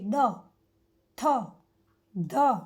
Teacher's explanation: ત બોલીએ એટલે આપણે દાંતને આપણી જીભ અડકે છે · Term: દંત્ય